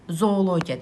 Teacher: Ya qoşa O-lar uzun O kimi tələffüz olunur. · Deməli, bu tipli sözlərdə qoşa O-lardan biri düşür, digəri isə uzun tələffüz olunur.